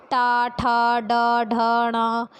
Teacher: हमारी जीभ का जो अगला भाग होता है, सबसे आगे का भाग, वो हल्का सा फोल्ड हो जाता है इनका उच्चारण करते पे। ठीक है, मुड़ जाता है। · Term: मूर्धा से उच्चारित वर्ण